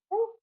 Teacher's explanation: 'उ' के लिए, अपने होंठों पर ध्यान दीजिए। वे गोलाकार हैं, और 'ओ' के लिए वे अंडाकार हैं। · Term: वृत्तमुखी